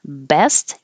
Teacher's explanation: hold the final T because you won't hear it you just put your tongue in the T position best your lips are beginning from a closed position B and